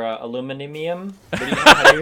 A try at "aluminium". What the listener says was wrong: Aluminium. Aluminium. You can't say aluminum. There's like several I's in that word. You can't just ignore them.